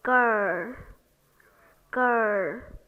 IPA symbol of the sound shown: ɜ